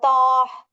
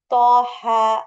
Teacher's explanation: தாஹ அப்படின்னு நீட்டி தான் முடிக்கணும் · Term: நீட்டுதல்